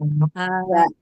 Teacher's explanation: Karena pangkal lidah tidak naik maka sifatnya istifal.